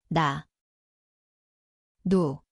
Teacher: Ito ay parang I. Ang lugar ay sa dulo ng dila. Itaas na gilagid.